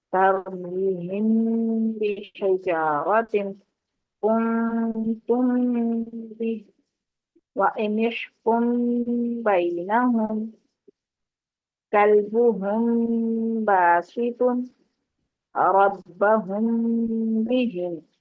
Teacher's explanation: تو یہ ہم, تم یہ جو ہے نا اس کو اخفا کہیں گے. میم ساکن کے بعد حرف با آ جانے پر اخفا ہوگا غننے کے ساتھ, ناک میں آواز چھپائیں گے